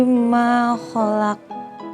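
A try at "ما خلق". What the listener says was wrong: Bukan ho tapi kho. Saya hanya menekankan bukan ho tapi kho.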